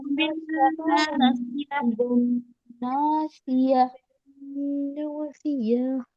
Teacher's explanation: صرف ہلکی سی ہا کی آواز آنا چاہیے لاسٹ میں، کیونکہ ہم تا کو ہا میں بدل رہے ہیں